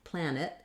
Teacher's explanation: it's a very reduced vowel because we have first syllable stress so plan is long and then it is short this n